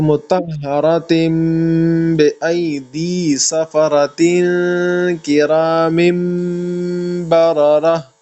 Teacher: ایک جگہ مطہرتم میں نون ساکن میم میں کنورٹ ہو گیا، آگے کرام میں پھر نون ساکن میم میں کنورٹ ہو گیا ہے، اور سفرتن اس میں اخفا کرنا ہے.